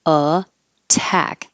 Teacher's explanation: it stays a t because it's in the stressed syllable so in the word attack the two T's are between vowels